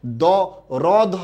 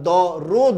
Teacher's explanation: দুইটা অ পাশাপাশি থাকলে পরের অটা কি হয়ে যায় ও হয়ে যায়